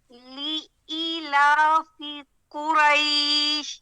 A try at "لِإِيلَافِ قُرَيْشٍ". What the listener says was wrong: زیادہ زور نہیں لگا. زیادہ زور نہیں لگا. لإيلاف قريش.